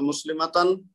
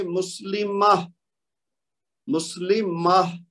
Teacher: ہم وہاں رک رہے ہیں، تو پھر ہم کیا کریں گے، اس تا کو ساکن بھی کر دیں گے اور پڑھتے ہوئے اس کو ہا کی آواز میں بدل دیں گے